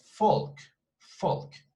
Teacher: in german they would pronounce this as a fee as an f sound